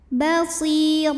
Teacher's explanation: huruf ra dibaca secara tafkhim karena berbaris tanwin fathah, dibacanya tebal. Basira, ra mad iwad sebab ada baris tanwin fathah yang diwaqafkan.